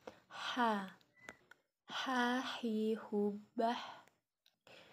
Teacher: huruf ini kita keluarkan dari tengah tenggorokan kita